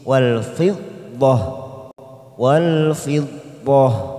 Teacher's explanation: Wal fiddah kita wakaf di sini. Ada huruf tak marbutoh di sini kita baca dengan huruf ha karena kita wakaf di sini